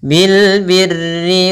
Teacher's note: itu alif lam qamariyah, jelas suara lamnya